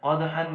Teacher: دال کے اوپر ہم نے قلقلہ کرنا ہے، اور حا کو ایک الف کی مقدار ایک زبر کے ساتھ وقت کی صورت میں ہم نے لمبا کر کے پڑھنا ہے۔